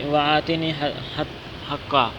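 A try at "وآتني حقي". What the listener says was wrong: یہ کیوں حقا پڑھ رہا ہے؟ آپ کیوں نہیں بولتے؟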